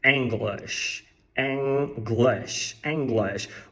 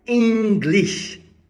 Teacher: o erro do brasileiro é usar o fonema I que é o i do português ao invés do e e e e relaxado do Inglês